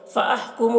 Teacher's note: میم ساکن کے بعد یہاں پر فا ہے، میم میں اظہار شفوی ہوگا